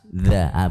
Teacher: Ujung lidah bertemu dengan ujung gigi jari atas.